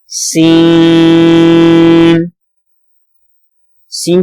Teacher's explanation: یہ حروف صفریہ میں سے ہے تو اس میں سیٹی کی آواز آئے گی